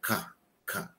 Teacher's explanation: E o estado da glote aberta, K, K. Ela sai tranquilamente, sem qualquer vibração de cordas vocais. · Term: oclusão